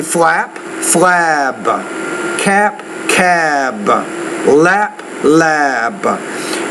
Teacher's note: when the P is at the end of the word, because it's a voiceless consonant, the vowel is shorter, which precedes it.